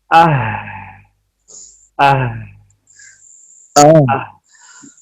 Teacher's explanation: یہ ہا جو ہے نا ہمس محموسہ ہے، تو ہمس کی وجہ سے اس میں سانس جاری رہے گا